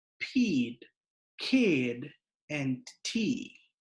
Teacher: aspiration is that puff of air that you hear when English speakers pronounce the p k and t at the beginning of words